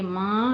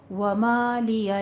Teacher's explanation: جب بھی آپ ما اور نا الف مدہ کے ساتھ ادا کریں گے میم اور نون کو تو ناک میں آواز نہیں لے جانی ہے